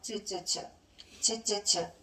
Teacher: 소리가 터지다가 좁은 통로를 비집고 나오면서 마찰되는 소리야.